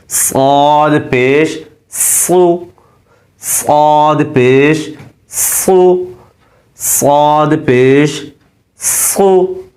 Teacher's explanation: مخارج کے اعتبار سے موٹا ہے اور اس کی آواز موٹی نکلے گی سیٹی سختی کے ساتھ